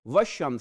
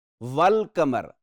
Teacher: والشمس سے یہاں لام نہیں پڑھا گیا، والقمر لام واضح پڑھا جا رہا ہے